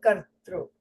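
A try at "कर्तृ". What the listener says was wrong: Neutral. The lip shape should be neutral, not kartru. A lot of people do that. When they pronounce with the u.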